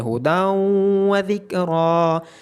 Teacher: نون ساکن کی آواز مرج ہو رہی ہے اگلے لیٹر میں، جیسا کہ ہداؤں، اب واو کی آواز میں ہم نے جو ہدن، یہاں جو نون کی آواز تھی اس کو ہم نے مرج کر دیا واو کی آواز میں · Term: ادغام